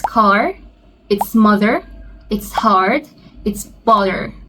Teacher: If you're trying to sound an American, then you have to pronounce the R pretty clearly. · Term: the R sound